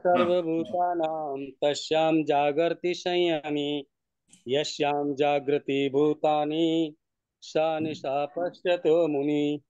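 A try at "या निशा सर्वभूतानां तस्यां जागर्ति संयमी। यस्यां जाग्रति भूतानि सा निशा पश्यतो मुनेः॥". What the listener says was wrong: उत्तम उत्तम, बहुत सुंदर उच्चारण, आप बहुत बढ़िया।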